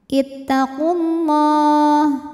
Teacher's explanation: Lam pada lafaz Allah dibaca secara tafkhim karena huruf sebelumnya dhammah. Maka lamnya tebal.